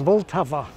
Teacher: like practically every word in Czech this name has stress on the first syllable